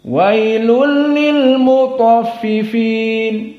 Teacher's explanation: boleh dibaca Dua harakat boleh dibaca empat tawasut boleh dibaca alisba enam tergantung dia nanti membaca setelahnya harus dibaca sesuai dengan apa yang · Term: Mad Arid l sukun